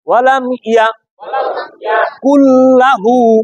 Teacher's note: তাহলে এই জায়গায় নুন সাকিনের স্পষ্ট না অস্পষ্ট, সামনে আসছে কে, নুন সাকিনের গুন্না ছাড়া ঈদগাম লামে করলো